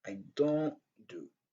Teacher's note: le son T est très, très, très réduit. Donc, c'est inexistant presque. Ouais. Seulement, c'est comme si on essaie de prononcer dans la gorge un peu.